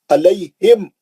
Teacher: पकड़ लेंगे होठों को, अलैहिम थोड़ा भी गुन्ना नहीं करेंगे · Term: इज़हार शफ़ी